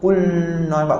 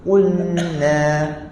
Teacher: kalau kita sebut Qul tu kita tak senyum sikit nanti lam kita akan jadi bunyi berat